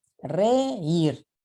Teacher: Y reír se carga la voz en ir. Aquí en reír estamos aplicando el acento del hiato.